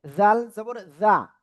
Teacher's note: জিহ্বার আগা উপরে দুই দাঁতের আগা লাগে। এবার হলো মোটা আওয়াজে উচ্চারণ করতে হবে।